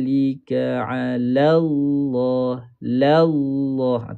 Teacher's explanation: lam pertama nipis lam pada kalimah Allah tebal